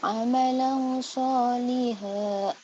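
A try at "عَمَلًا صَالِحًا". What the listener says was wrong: Amalan. Soalnya panjang. Amalan panjang. Soalnya panjang.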